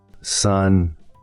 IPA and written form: sʌn (sun)